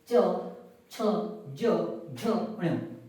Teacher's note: इन्हें स्पर्श संघर्षी व्यंजन इसलिए बोला जाता है क्योंकि च, छ, ज, झ, ण्य इन व्यंजनों को उच्चारित करने पर जो जिह्वा होती है वो स्पर्श तो करती है, साथ में क्या करती है? संघर्ष करती है।